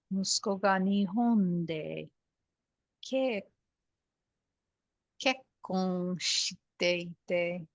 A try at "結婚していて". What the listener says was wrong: This is flat too. It's not 結婚. You're stressing on the K. 結婚していて。